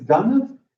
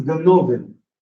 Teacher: when you shift the stress, you get that vowel is realized not as a schwa, but as a full vowel